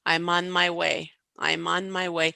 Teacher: everything just kind of linked up nicely and smoothly with the missing sound being the a in in am